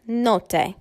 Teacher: an airstream is expelled via the nose as the velum is lowered and not the mouth, such as note. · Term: Nasals